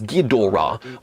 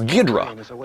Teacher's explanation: Now, I specify written Japanese because in practice, Japanese speakers talk very fast, and those connective vowel sounds are often aspirated or swallowed up entirely, even if technically they're there. So a word written out as Ghidorah would end up spoken quickly as Ghidrah